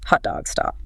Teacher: Mouth is quite open, lips maybe slightly rounded, tongue is low and towards the back.